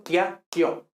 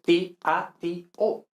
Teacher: Todas las secuencias de vocales adyacentes, es decir, vocales que están juntas, que no sean AE, OE o AU, son hiatos en latín clásico. Es decir, son dos vocales que pertenecen a dos sílabas diferentes